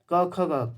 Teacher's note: जो क वर्ग है ये कंठ से बोले जाते हैं